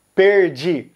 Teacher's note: São Paulo mais interior e outras regiões vão usar o R retroflexo, perdi. Assim como Goiás, que também fala perdi com esse R americano retroflexo.